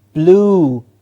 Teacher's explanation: there is no you sound in this word it's a long o sound